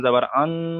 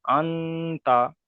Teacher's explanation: এখানে আন কেন গণনা করছি কেন, এখানে নুন সাকিনের পরে হুরুফে ইকফার 15টি অক্ষরের মধ্যে এখানে তা এসছে, তাই এখানে নুন সাকিনের আওয়াজকে নাকে তুলে একালি পরিমাণ গণনা করে পড়তে হবে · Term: ইকফার কায়দা